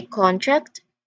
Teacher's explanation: It's the same with contract as a noun, a legal document. We say contract with a stress on the first part